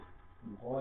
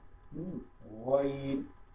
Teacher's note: গলা ঘষে গইন উচ্চারণ করতে হবে